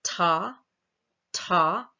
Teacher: that T is a voiceless alveolar stop and the voicing doesn't start until about 91 milliseconds